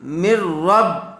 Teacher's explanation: نون ساکن کے بعد را آیا ہوا ہے اس لیے میم کو را سے ملا دیں گے اور بغیر غننے کے پڑھیں گے